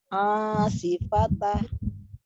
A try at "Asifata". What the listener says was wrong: Sifata, bukan tah. Asifata.